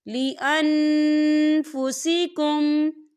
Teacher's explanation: یہاں دیکھیں لِأَن، یہاں نون ساکن ہے اور نون ساکن کے بعد فا آ رہا ہے، اور فا جو ہے اقفا کا ورڈ ہے، تو ہم یہاں اقفا کریں گے، نون ساکن کی آواز کو ناک میں چھپائیں گے